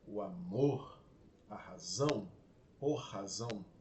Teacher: Naturalmente a voz sobe e enche-se para pronunciar o amor, a razão, por razão. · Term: terceira sílaba tônica